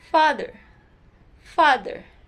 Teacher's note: When producing sounds or words that are related with these two, the air is forced to pass through the lower lip and the upper teeth. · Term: fricative consonants